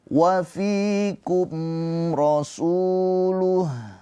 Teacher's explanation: Di sini ada mim sukun bertemunya huruf ro. Ya, ketika mim sukun bertemu selain mim dan ba itu izhar syafawi mimnya dibaca dengan jelas